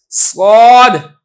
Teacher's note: तो इसलिए ये जो कैद हज़रत ने लगाई है कि सनाया उलिया और सनाया सुफला इन दोनों का किनारा, इसमें तकल्लुफ़ करने की ज़रूरत नहीं है, बल्कि आप इसके अंदर जो आपने फोकस करना है वो आपने फोकस करना है सीटी की आवाज़ है। स्वाद है तो स्वाद में सीटी की आवाज़ है और साथ साथ इसमें आवाज़ को आपने थोड़ा सा पुर भी करना है, मुफख्खम भी इसको पढ़ना है, स्वाद इस तरीके से।